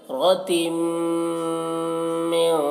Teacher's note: मीम मुशद्दद है तो गुन्ना कर रहे हैं